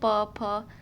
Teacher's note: पाव किससे बोले जाते हैं यह तो साफ साफ दिख रहे किससे ओट से